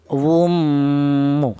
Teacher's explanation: Di samping dia idgham menyatu, itu juga dibaca ada suara berdengungnya. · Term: idgham bi gunnah